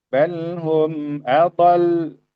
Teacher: ada sedikit kita alirkan suaranya supaya kedengaran bahwa di sana ada lam yang bertasdid